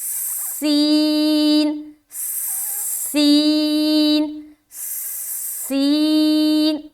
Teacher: یہ جو سین ہے نا, یہ سیٹی کی مانند ادا ہوتی ہے